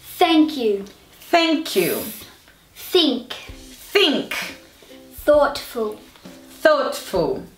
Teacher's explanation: mas o f não pode ser ele porque esse o th eu coloco a língua entre os dentes e sai um ar um sopro